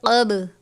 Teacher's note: قب، قاف با زبر قب، با ہے حرف قلقلہ میں سے، قلقلہ کریں گے